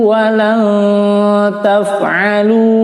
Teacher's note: wa lan taf'alu, ikhfa disamar ditahan 4 ketukan